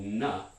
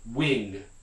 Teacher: this is a velar nasal and uh right it's uh different from the coronal nasal na